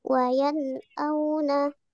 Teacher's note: Kemudian tadi sudah dijelaskan bahwa izhar itu cara membacanya harus jelas. Tidak boleh ada gunnah ataupun dengung, harus jelas.